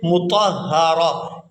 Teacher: جیسے ہم یہاں پر اس کو ادا کریں گے مطہرہ، یہاں جو 1 آنکھ والی تا ہے یہ ہا کے اندر کنورٹ ہو جائے گی اور یہ ساکن ادا کریں گے۔ یہاں را کو اس ہا ساکن کے ساتھ ملائیں گے